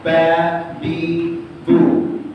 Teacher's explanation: itu dengan bibir bawah Fa fi fu sudah huruf bibir kemudian ada huruf ba dua bibir ditekan